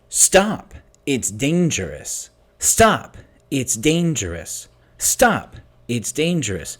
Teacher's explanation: you can definitely hear the word stress on stop it's an important word it's dangerous so the stresses on stop